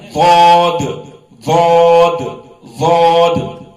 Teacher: اس کے بعد ہے ضاد ضاد ضاد اور یہ موٹا ہوتا ہے اور زبان کا کنارہ اوپر کے دانتوں کے مسوڑوں کو لگانے سے نکلتا ہے